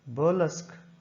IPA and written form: bɜːˈlesk (BURLESQUE)